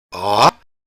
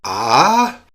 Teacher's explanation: just make sure it's a straight rise not a sort of uneven one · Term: rising tone